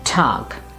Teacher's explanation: if ge comes at the end of a word or a syllable, its pronunciation will be k. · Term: K sound